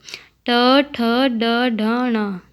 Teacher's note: ट, ठ, ड, ढ, ण मूर्धा से उच्चारित वर्ण।